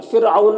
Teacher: حمزہ میں کھڑا زبر ہے تو اسے ایک الف کے برابر کھینچیں گے۔ فرعون، را ساکنہ سے پہلے فا کے نیچے زیر ہے تو را کو باریک پڑھیں گے۔